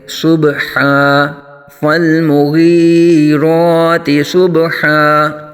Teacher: صاد کو پر آ جائے گا، با ساکن میں یہاں پھر قلقلہ ہوگا اور دو زبر کو الف سے بدل کر پڑھیں گے۔